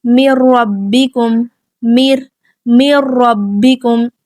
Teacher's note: یہاں پہ کیا ہے، نون ساکن مکمل طور پر آگے لام اور را کے ساتھ مل گیا، جس کی وجہ سے یہاں پہ کیا ہے، مکمل ادغام ہو رہا ہے۔ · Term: کامل ادغام